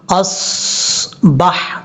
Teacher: صاد آپ کو پتہ ہے کہ حروف مستعلیہ میں سے ہے، اس کو پر پڑھیں گے